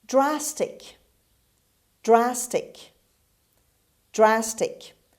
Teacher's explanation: the stress is at the beginning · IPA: /ˈdræstɪk/